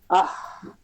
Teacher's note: যে আহ উচ্চারণ হয়ে সঙ্গে সঙ্গে বাতাসটা বন্ধ হয়ে যাচ্ছে না গলার যে মাঝে ওখান থেকে উচ্চারণ হয়ে বাতাসটা বন্ধ হচ্ছে না বাতাসটা প্রবাহমান থাকবে